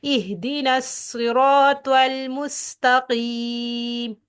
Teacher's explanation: ہم نے صاد اور سین کے اندر سیٹی والی آواز نکالنی ہے